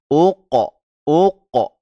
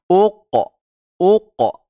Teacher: tatkala lidah belakang itu lepas maka terjadilah pantulan karena dia memiliki sifat Qalqalah